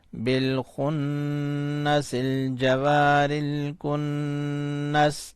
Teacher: الکن، نون زبرنا، بالخنس الجوار الکن، سین ساکن، بالخنس الجوار الکنس، وقف کی صورت میں سین کو ساکن کریں گے تو بالخنس الجوار الکنس ہو جائے گا